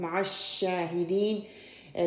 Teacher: مع الشاہدین شین کو 2 کاؤنٹ ہم اس کو لمبا کریں گے